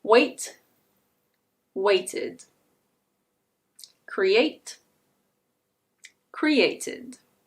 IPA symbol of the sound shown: id